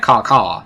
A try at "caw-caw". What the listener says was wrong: Yeah, but you gotta use the back of the throat a little bit more.